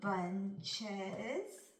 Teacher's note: Remember, the ES has 2 sounds. The E makes a schwa sound, and the S makes the Z sound.